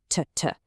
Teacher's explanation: No buzzing, right? That's voiceless.